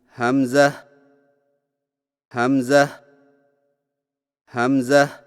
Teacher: حمزہ کی ادائیگی میں ہا کو بغیر کھینچے میم کے ساتھ ملائیں اور میم میں آواز کو لمبا نہ کریں